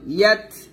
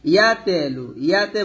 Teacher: হুয়াল্লাযী বাআসা ফিল উম্মিয়িনা রাসূলাম মিনহুম রাসূলাম লাম গুণ হবে ইদগামে বা গুন্না সুতাকে টান দিবেন রাসূলাম মিনহুম ইয়াতলু আলাইহিম ইয়াত আজবর ইয়াত এখানে হামস উচ্চারণ করবেন। ইয়াতে বলবেন না, ইয়াতে বললে কিন্তু কলকলা হয়ে যাবে